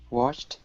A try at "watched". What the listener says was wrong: Okay, instead of wash with an SH, it's CH sound. Watch. Watched.